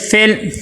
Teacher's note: فا کو لام کے ساتھ ملائیں گے، لیکن قلقلہ نہیں ہونا چاہیے